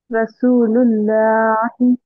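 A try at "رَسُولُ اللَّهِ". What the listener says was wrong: लाम मोटा आना। रसूलुल्लाही, रसूलुल्लाही, लामे जलाला को हम जब मोटा पढ़ेंगे तो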